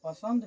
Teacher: पसंद में आधा दंत नो आ जाता है